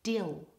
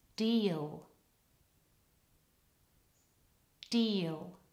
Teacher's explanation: that's a short eat dill and now the long vowel e deal